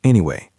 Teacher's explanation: If you say anyway with a flat voice, it sounds dismissive. It sounds like you don't care.